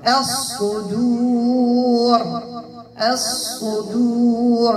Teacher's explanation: لكن عند الوقف غنوقف بالراء مفخمة